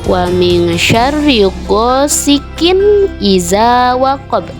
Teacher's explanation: dibacanya dengan wajib terang atau jelas, tidak boleh berdengung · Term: izhar